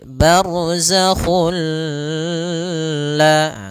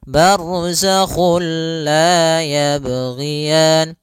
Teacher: bila gunnah berarti tidak boleh disertai dengan gunnah, tidak boleh ada penahanan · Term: idgham bila gunnah